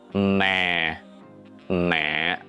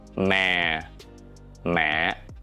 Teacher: Both start low, but the length and the end is different.